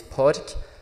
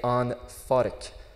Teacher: So like P becomes like an F, with a H after it. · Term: consonant mutations